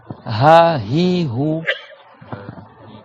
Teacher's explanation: C'est tout léger, il n'y a pas de frottement.